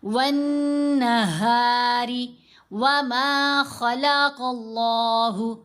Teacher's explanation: خا اور قاف دونوں حروف مستعلیہ میں سے ہیں، ان کو پر پڑھنا ہے، ان کو موٹا پڑھنا ہے